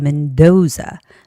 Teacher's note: The name has the second syllable stress.